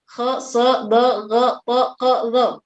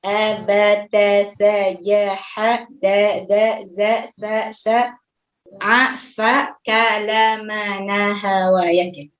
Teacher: Bagian lidahnya merendah turun ke bawah gitu, tidak naik seperti isti'la, sehingga dia menjadi tipis. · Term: al-istifal